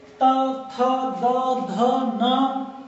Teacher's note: ये जीभ जो है हमारी ऊपर के दांतों से टच कर रही है